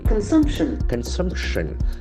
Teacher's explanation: The accent falls on the second syllable.